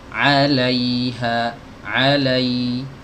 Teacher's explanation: huruf ya dia memiliki sifat rokhawah ya, artinya suaranya dialirkan teman-teman ya